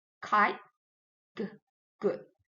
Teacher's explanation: We block airflow with the back of the tongue against the soft palate. It is called velar.